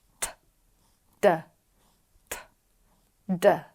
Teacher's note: T, d, t, d. I can feel the vibration with d, but nothing for t. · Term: voiced